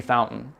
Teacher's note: there's a glottal stop in it if you're from Colorado